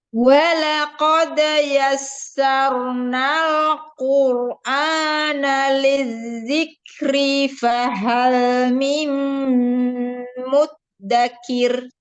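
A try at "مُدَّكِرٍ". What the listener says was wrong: Harinya jangan mengayun, hanya mengalir suara ro itu ya, tidak diayunkan. Jadi jangan dipanjangkan. Kalau dia keayun dia kepanjang.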